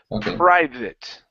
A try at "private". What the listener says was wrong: don't Focus so much on that R